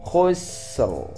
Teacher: Kita nampakkan sin dulu baru ke ra yang sukunnya. Seperti orang baru ingin memulai huruf ra.